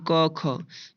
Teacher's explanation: क ख कंठ से बोल रहे हैं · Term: कंठ ध्वनि